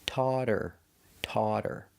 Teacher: When I say taught her, her is not a stressed word. So, the H is silent. If the H is silent, that means it's a vowel after taught. · If the H is silent, that means it's a vowel after taught. So, the T changes to a D and you hear taught her, taught her. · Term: fast D